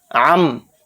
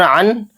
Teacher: आइन दो ज़बर अन, और अन को जब इसमें इक़लाब का कायदा हुआ तो अन की आवाज़ को हम मीम में बदल देंगे